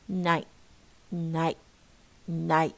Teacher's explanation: يعني we do not pronounce it we pronounce it, you know, it's called healthy because you do not release air. You pronounce it but you do not release air.